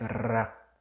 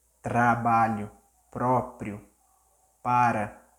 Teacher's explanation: If it's one R in the middle of the word, like those examples, so you may roll the R like ra.